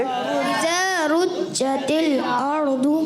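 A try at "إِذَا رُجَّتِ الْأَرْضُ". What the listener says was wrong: اچھا, بعض بچے یا بڑے بھی جیم کی ادائیگی جب کرتے ہیں تو چے جیسی ادا کرتے ہیں, کیونکہ اردو میں چے ہوتا ہے, عربی میں چے نہیں ہوتا. تو رج نہیں پڑھیں گے.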